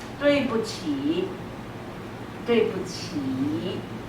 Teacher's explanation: 起 is the third one, is the last one. So you say it full third.